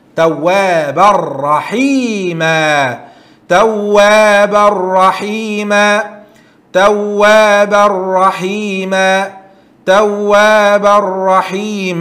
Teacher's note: And التنوين after تنوين راء, you will do this merge without غنة. توابا راء, it will be توابر.